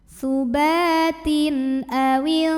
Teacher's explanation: karena tanwin kasrah menghadapi huruf halqi atau huruf tenggorokan yaitu hamzah, maka tanwin dibaca n jelas.